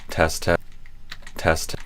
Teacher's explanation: we go from kind of no sound to a sudden wall of sound. So that's the kind of explosion of the T sound.